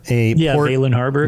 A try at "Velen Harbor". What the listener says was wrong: Velen. It's an E. If Valenwood has an A, Then this would be Velen.